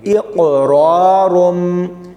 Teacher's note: اقرارم، رارم باریک نہیں پڑھنا، قاف اور را موٹے یعنی پر پڑھے جائیں گے۔ اکثر لوگ یہاں پر با کو لام کے ساتھ ملاتے ہوئے لام موٹا پڑھ دیتے ہیں۔